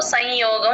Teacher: య ముందు ఎప్పుడు సున్నా వచ్చినా సరే నాసిల్ సౌండ్ తో సగమే పలుకుతాం అనుస్వారాన్ని హాఫ్ పలుకుతాం